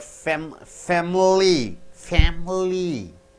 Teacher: Family, this I is squeezed out.